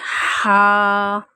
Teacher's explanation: حلق کے درمیان سے ہا